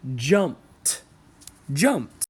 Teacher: P is one of those unvoiced sounds, so again, since there's a P at the end, the ed will make the T sound.